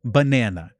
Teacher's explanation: we have the word banana, and the stress is on the second syllable